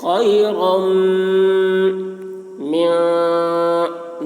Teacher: میم میں غنہ ہوگا، یعنی میم کی آواز کو ناک پہ لے جا کر گنگنائیں گے